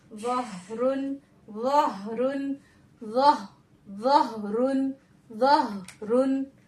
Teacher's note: हा पे जज़म होने की वजह से यहाँ पर हम्स का कायदा हो रहा है